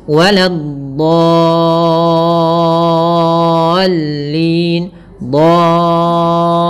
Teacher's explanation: jangan ditebalkan lamnya. Banyak yang terjadi adalah menebalkan huruf dot, menebalkan huruf lamnya, padahal dia tipis.